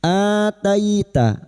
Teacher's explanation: bertemunya hamzah dengan mad badal dua harakat kita panjangkan · Ataita, tai fathah bertemu ya sukun, kita lunakkan huruf lin seperti bertemu dengan huruf abjad i, jangan dibaca e, ya, i. Ataita, ataita fir'auna, ra sukun yang didahului kasroh dibaca tarkik atau tipis, fir'auna.